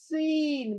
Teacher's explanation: ये इसकी आवाज सुई वाली है, एकदम बारीक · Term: सीटी वाली सीन